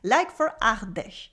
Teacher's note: We also have an R sound, le champ du fort, that comes from the back of the throat